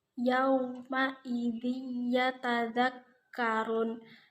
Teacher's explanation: bacaan Idgham Bighunnah yang dibaca mendengung karena ada call roh tanwin bertemu dengan yakni yang ke-10 juga